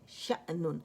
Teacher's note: شین اب باریک لیٹر ہے، حمزہ بھی باریک ہے، نون بھی باریک ہے